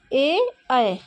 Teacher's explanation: कंठ से भी आवाज़ आ रही है और तालव्य से भी, तालव्य में भी जीभ टच हो रही, ए ऐ, जीभ तो नहीं टच हो रही, लेकिन जो है कंठ और तालु दोनों से ये इनका उच्चारण स्थान होता है। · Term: कंठ तालव्य